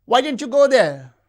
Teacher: The high fall in WH question refers to surprise.